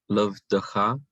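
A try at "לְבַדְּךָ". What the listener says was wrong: Levadcha. Levadcha. Now this is a closed syllable because of the dagesh, and it's ah. Closed unaccented syllable requires a short vowel.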